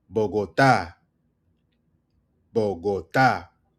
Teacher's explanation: Stress on the last word or the last syllable